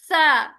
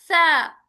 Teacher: जैसे मैंने कहा बा भी होंठों से अदा होता है, लेकिन दोनों होंठ बंद होकर, अब बा जैसे होंठों में भी ना डिफरेंट पॉइंट्स हैं, तो बा दोनों होंठ आपस में लगेंगे, जबकि फा ऊपर के दांत नीचे के होंठ को कतरेगा